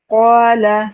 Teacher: اب یہاں پہ قاف جو ہے حروف مستعلیہ میں سے ہے، موٹے پڑے جانے والے حروف میں سے ہے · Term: موٹے الف